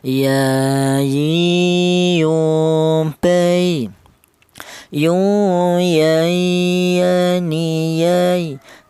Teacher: huruf ya ini keluarnya huruf berasal dari tengah lidah